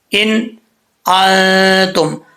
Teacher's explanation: نون ساکن کے بعد حرف حلقی میں سے حرف آ رہا ہے تو اس کو ظاہر کر کے پڑھا جائے گا. ان انتم، آگے جو ان آ رہا ہے اس پہ غنہ کریں گے، یہ نون ساکن کے بعد حروف اخفا میں سے تا آ رہا ہے تو یہاں پہ کیا ہوگا، غنہ ہوگا ایک الف کی مقدار.